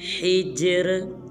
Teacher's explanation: اس حرف میں جیم کو قلقلہ کریں گے اور آخر میں را کو باریک پڑھیں گے